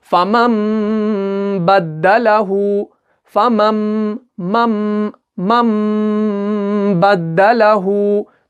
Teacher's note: नून साकिन और तनवीन के बदले में हमें मीम का तलफ़ुज़ करना है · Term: इक़लाब